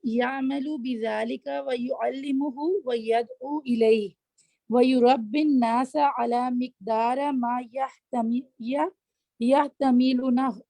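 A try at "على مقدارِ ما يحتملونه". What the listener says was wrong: ہاں، اس کو پڑھیں گے علی مقداری، را کے نیچے زیر ہے، علی مقداری ما یحتملونہ.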